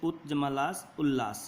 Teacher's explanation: यदि त द के बाद ल रहे तो त द ल में बदल जाता है